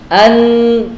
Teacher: Tidak ada suara dari mulut. Ini semua suara dari gunnah.